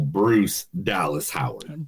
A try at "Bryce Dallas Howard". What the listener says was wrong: Bryce Dallas Howard. You said Bruce. Bryce Dallas Howard.